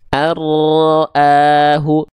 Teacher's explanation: Nun sukunnya dia dileburkan ke huruf ro enggak ada lagi bunyiannya